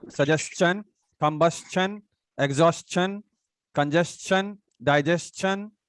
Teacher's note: okay interesting requisition so whenever we do have s-t-i-o-n before tion if we do have s it will become chun